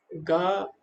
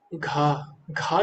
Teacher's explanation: और इसी प्रकार गा और घा है, गा घा, घा जब हम बोल रहे तो ज्यादा वायु निकलती है। तो गा हो गया अल्प प्राण और घा हो गया महाप्राण